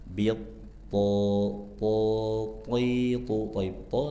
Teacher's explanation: to dari ujung lidah menempel dengan gusi atas. Ya, gusi, ya, sama dengan ta dan dal. · Bedanya to tidak ada angin karena dia tebal, ya, isti'la dan itbaq, sehingga terjadi pengepungan suara pada lidah dan langit-langit.